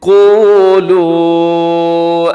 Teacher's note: اس آیت کریمہ کے اندر سب سے پہلے دیکھیے گا لفظ ہے قولو، یہاں پر آپ نے مد کرنی ہے اور جو پہلا حرف ہے قوف اسے موٹا رکھیے گا، اسے کولو نہیں پڑھنا آپ نے بلکہ قو یہ واو مدہ ہے، تھوڑا لمبا بھی کیجیے گا۔